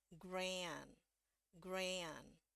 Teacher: di nada keduanya dia harus terus turun nadanya